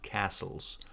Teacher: there is no T it's just castles